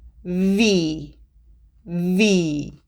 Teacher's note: you should have contact between your top teeth your bottom lip and you should feel a vibration when you do it one more time v v now let's